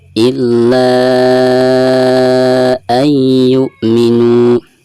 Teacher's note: Maka bacaan mad di sini dihukumi mad jaiz munfasil, dan dibacanya itu harus dipanjangkan, bisa 4 atau 5 harokat.